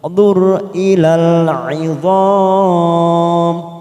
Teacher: Wandur. Ro sukun kita baca tafkim karena didahului dhammah.